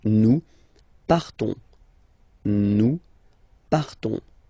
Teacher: So classic ending ONS, you don't pronounce the S, you just have this on sound nasal.